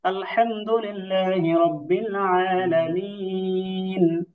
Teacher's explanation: এখন আলহামদুলিল্লাহি রাব্বিল আলামিন, এই যে দম ছাড়লাম, এই আলামিন দম ছাড়ার কারণে এখানে তিন আলিফ টানা হয়